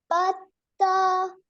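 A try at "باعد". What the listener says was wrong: No, this is not ta. This is ayn, not ha. Ba ayn dal.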